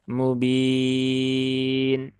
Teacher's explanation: ini hukumnya berubah menjadi Mad Arid lisukun ya mubin ya boleh dibaca Dua harakat boleh dibaca empat harakat boleh dibaca enam harakat